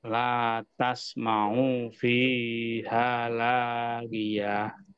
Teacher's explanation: latas mau di sini tidak panjang, tetap pendek, Pak ya.